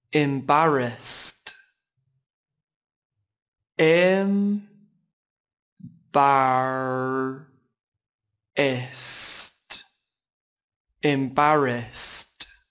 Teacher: Từ này chỉ có 3 âm tiết và trọng âm rơi vào âm tiết thứ hai các bạn nhé.